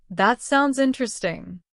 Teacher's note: Notice the rising tone. It shows enthusiasm.